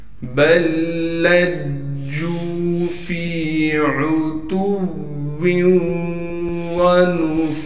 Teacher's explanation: فا کے بعد واو مدہ ہونے کی وجہ سے فا کو ایک الف کی مقدار کھینچیں گے